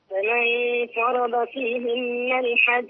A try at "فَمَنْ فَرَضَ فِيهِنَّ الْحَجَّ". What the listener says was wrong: يا أمي بصي اسمعين، فمن فرض كده فخمنا الغنة، والغنة عندنا مرققة لأن داخلين على إيه؟